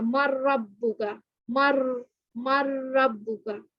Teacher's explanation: یہاں پہ جو نون ہے اور اس کے ساتھ را مشدد ہے، یہاں پہ نون سائلنٹ ہو جائے گا اور را کے ساتھ را جو ہے وہ میم کے ساتھ مل جائے گا، مر ربو کا، مر مر ربو کا، اس طرح پڑھا جائے گا، تو یہاں پہ کیا ہو رہا ہے؟ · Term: ادغام